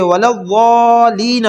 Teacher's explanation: یہ غلطی پائی جاتی ہے کہ وَلَضَّالِينَ پڑھ دیتے ہیں، یعنی لام پر جو شد ہے اس کو سکپ کر دیتے ہیں، اس کو نہیں پڑھتے ، ضالین نہیں پڑھیں گے بلکہ وَلَضَّالِّينَ۔ اگلا حرف دیکھیے اتحاجونی،